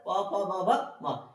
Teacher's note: ये सब किसे बोला जाता है ओठ से बोला जाता है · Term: ओष्ठ